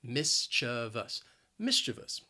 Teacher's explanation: the word has three syllables the stress is on that first syllable and both that second and third syllable have that schwa sound